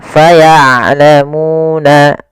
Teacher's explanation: Syiddah itu dia tertahannya suara, rokhawah mengalir suara. Maka ain jangan terlalu dialirkan suaranya tapi tidak juga ditahan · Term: sifat bainiyah